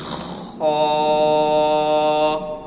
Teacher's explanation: خا کی آواز حلق کے پہلے حصے سے ادا ہوگی جو کہ زبان کی جڑ کے قریب ہے۔